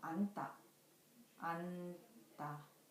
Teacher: The final consonant of 안 is 니은, 지읒, but it only has the sound of n.